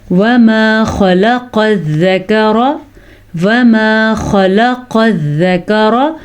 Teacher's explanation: خا کو پر پڑھنا ہے اور قاف کو پر پڑھنا ہے کیونکہ خا اور قاف حروف مستعلیہ میں سے ہیں۔